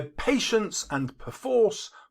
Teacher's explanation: puts the stress on the first and third syllables